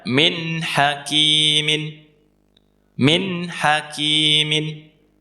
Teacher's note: Nun sukun ketika bertemu ha juga kita baca jelas. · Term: idhar